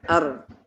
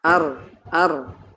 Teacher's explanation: Artinya ketika mengucapkan huruf ro, lidah ujungnya bergetar. Ar. Takrir berulang-ulang ya. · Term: sifat at-takrir